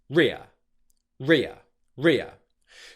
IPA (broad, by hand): rɪə